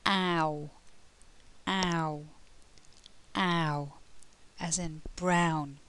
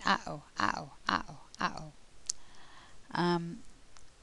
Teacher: The mouth moves from open to closed. The lips go from spread to rounded, and the tongue moves from the front of the mouth to the back of the mouth.